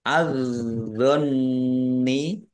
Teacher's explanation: langsung masuk ke huruf berikutnya yaitu D ditandai dnya ada tasdidnya Nun tasdid bacaan ghunah dibaca mendengung ditahan biar tampak dengungan · alif lam syamsiah karena tidak dibaca langsung masuk ke huruf berikutnya